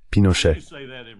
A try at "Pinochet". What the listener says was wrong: C'est Pinochet, pas Pinochet avec un A.